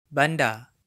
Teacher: the final R is silent in many Malay accents, including the mainstream Johor-Riau Selangor Malay.